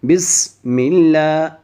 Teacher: سین کے اوپر جزم ہے اور سین کو سیٹی کے ساتھ پڑھنا ہے